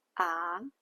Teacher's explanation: The second tone is a rising pitch, ah, just like questioning someone with a rising intonation, ah.